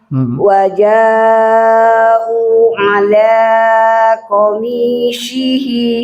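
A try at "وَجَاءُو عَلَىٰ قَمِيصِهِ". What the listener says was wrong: Waja'u ala qamisi qamisihi. Bukan ain, bukan o. Si Sodnya dilatih lagi. Si.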